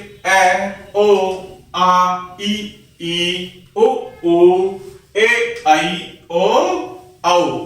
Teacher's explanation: जिन स्वरों के बोलने में हवा सीधे मुंह से बाहर निकल जाती है वे निर्नुनासिक या मौखिक स्वर कहलाते हैं।